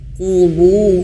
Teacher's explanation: huruf qaf manyun karena dia berharokat dhammah